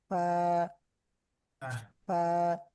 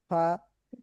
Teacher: নিচের ঠোঁটের পেটের মধ্যে আমাদের দুই দাঁতের আগা যখন লাগবে, তখনই আমাদের একটা শ্বাস বা একটা আওয়াজ, একটা বাতাস বের হবে